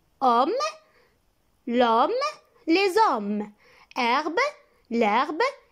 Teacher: On ne le prononce pas, mais il peut faire la liaison ou l'élision. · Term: H muet